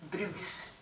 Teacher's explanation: but if you say the name Bruce there's much less vibration going on and that again so bruise is long and Bruce is shorter